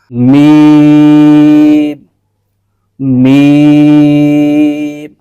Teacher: दोनों होठों का सामने वाला हिस्सा है खुश्क हिस्सा कहलाता है दोनों होठों के खुश्क हिस्से के आपस में मिल ने से एक हर्फ अदा होता है · دونوں ہونٹوں کے خشک حصے کے آپس میں ملنے سے ایک حرف ادا ہوتا ہے